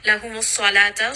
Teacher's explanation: Sad is going to be heavy. Lam here is light, so make sure you don't make that heavy. And we are not going to say salata.